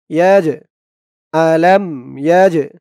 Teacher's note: এই জিমটা হচ্ছে কলকলার হরফ, ধাক্কা দিয়ে পড়তে হবে